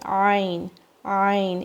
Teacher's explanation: It's like you're digging inside your throat and you're pressing your vocal cords.